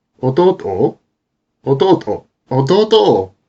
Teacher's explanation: a word with a final accent, such as 弟 in 弟 は, as for my younger brother, replaces that accent with the intonation before the pause